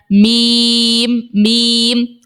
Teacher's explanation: اب میم کو دیکھو، جب دونوں ہونٹوں کا خشک والا حصہ آپس میں ملے تو میم نکلتا ہے